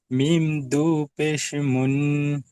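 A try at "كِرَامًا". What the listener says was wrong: মিম দু জবার পেশ না মিম দু জবার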